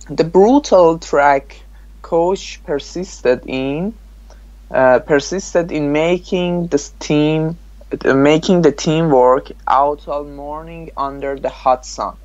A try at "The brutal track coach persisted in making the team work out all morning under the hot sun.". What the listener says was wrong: No, your intonation was not good. Try to read it one more time, more slowly and more deliberately, more carefully.